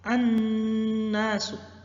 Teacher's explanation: Khusus untuk huruf nun, maka pengucapannya adalah didengungkan selama 3 harokat.